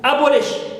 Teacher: Lish also is my suffix, I stress bo.